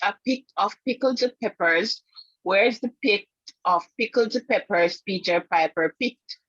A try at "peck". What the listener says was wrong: So if Peter Piper picked a peck, where's the peck of pickled peppers Peter Piper picked? So it's peck, not pick. So you mispronounce it P-E-C-K, but that's okay.